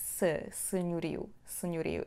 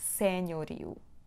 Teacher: in the first syllable we have se, s-e, and that e is actually muted